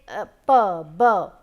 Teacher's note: So, if I say p, b, there is a plosion type of thing, air is being released with a plosion, that is why these are also called plosive sounds